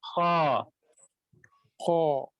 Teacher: خا حلق کے اوپر سے ادا ہوتا ہے تو اوپر والے حصے سے ساؤنڈ نکالیں